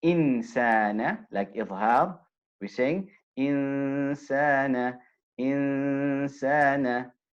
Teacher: the noon is being covered now it's being concealed by the scene